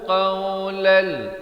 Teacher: idgham bila gunnah di sini, qawlan jadi qawlal